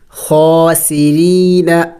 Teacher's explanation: را کو میں نے باریک پڑھا اس لیے کہ جب را کے نیچے زیر ہو تو پھر را کو باریک پڑ جاتی ہے اور را کے اوپر جب زبر ہو یا پیش ہو تو پھر را کو موٹا پڑا جائے گا.